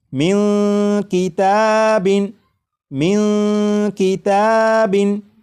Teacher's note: یعنی اس نون ساکن کی آواز کو ناک میں چھپا کر غنہ کر کے پڑھیں گے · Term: اخفا